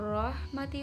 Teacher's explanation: ro-nya sendiri karena berharakat fathah maka ro tafhim dibaca tebal